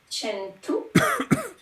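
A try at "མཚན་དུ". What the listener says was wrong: Tsen, c'est mieux tsen que chen, mais c'est pas très grave. Et nin tang tsen tu yelwa me parni.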